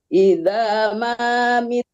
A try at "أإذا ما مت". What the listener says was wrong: Jangan iza, alif amzahnya ketinggalan tuh satu. Dia satu perangkat. Iza ma mit.